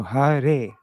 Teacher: we see it's followed by a short A, so it's a laghu syllable. And then re is a long syllable because it's followed by an E, which is this one right here, guru.